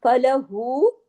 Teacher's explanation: हाँ उल्टा पेश हु, वाव मद्दा के बराबर खींचता है